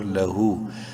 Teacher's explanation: الٹا پیش کی وجہ سے ہا کو لمبا کریں گے ایک الف کے برابر